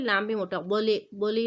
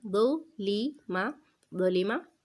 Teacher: وا کو موٹا پڑھنا ہے تو ایسا نہ ہو کہ لام بھی موٹا، بولے بولی نہ ہو جائے، بلکہ بولی ماں، ٹھیک ہے، لام باریک ہوگا، دو لی ماں، بولی ماں، وقفاً دولم۔